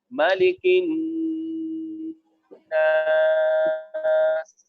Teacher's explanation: ایک الف کی مقدار ناک میں نون کی آواز کو چھپائیں گے